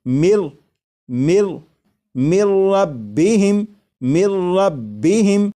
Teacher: لکھا ہوا ہے من، لیکن جب نون ساکن کو را میں ملا کر پڑھیں گے تو پھر نون ساکن کی آواز نہیں آئے گی، بلکہ میم کے بعد را کی آواز آئے گی، اور یہاں پر غنہ نہیں کریں گے اور اسے پڑھیں گے مر ربہم۔ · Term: ادغام